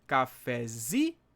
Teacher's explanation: a sílaba tônica tá aqui no zi